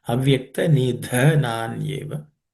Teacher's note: The word nidha, this dha is also aspirated.